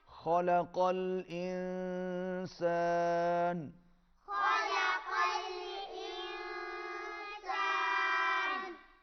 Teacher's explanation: نون کی آواز ناک میں جائے گی، اخفا ہوگا۔ قاف موٹا ادا کریں گے، خا کو بھی موٹا ادا کریں گے۔